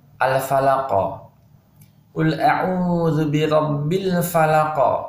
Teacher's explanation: Jadi huruf qaf saat dia waqaf atau berhenti, dia mantul atau qalqalah.